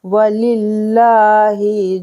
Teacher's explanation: लफ्ज़ अल्लाह से पहले ज़ेर है तो यहाँ पर बारीक पढ़ा जाएगा